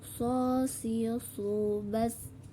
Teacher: Yang membedakan antara sin dan shad adalah suara menebal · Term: huruf shad